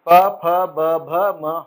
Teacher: प वर्ग ऐसा है बिल्कुल कि बिना होठों को मिलाए आप उच्चारित कर ही नहीं पाओगे। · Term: ओष्ठ्य